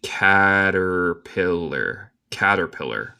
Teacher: el T en el medio de palabra muchas veces suena como R en español.